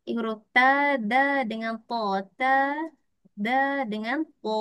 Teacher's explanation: Tetapi menyentuh ke mana? Menyentuh ke pangkal gigi kacip. Iaitu maksudnya tersentuh badan gigi tu.